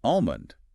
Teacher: That middle consonant just vanishes in fluent native speech. If you pronounce the L, you are signaling that you are reading the word, not speaking it naturally. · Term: silent L